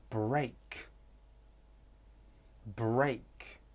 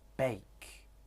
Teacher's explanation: In initial clusters, R is frequently deleted. In final clusters, it's common that R, L, T, and D are deleted as well. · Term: consonant deletion